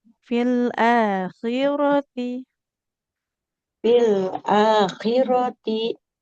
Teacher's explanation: Di fil akhirati rnya enggak boleh panjang ya. Fathah kan enggak ada alif di depannya.